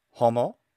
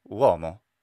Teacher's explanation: Stressed short O became uo.